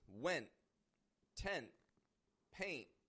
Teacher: I'm stopping the T at the ending of that word in my throat using my glottis. I also have the tip of my tongue going up to the position of the N, of the T, to my alveolar ridge behind my teeth.